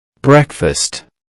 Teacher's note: That's 2 syllables. The stress is on the first syllable.